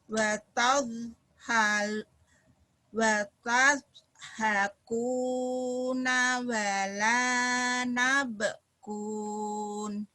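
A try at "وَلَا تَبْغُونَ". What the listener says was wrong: Wala tabgun titiknya dua ya.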